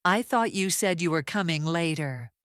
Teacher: The pitch rises in the middle and falls at the end.